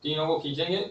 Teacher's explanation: عین سین قاف ایسے، تو گننا ایک ہی الف کے برابر کریں گے اور مد یہ 3 الف کے برابر کریں گے، عین سین قاف، تینوں کو کھینچیں گے، تینوں کو برابر، جتنا عین کو اتنا سین کو، جتنا عین کو اتنا قاف کو، تینوں حروف کو برابر ہی کھینچیں گے